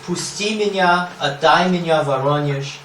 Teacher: Iambic tetrameter with a missing accent on the ictus. This is the syllable capable of stress in the third foot.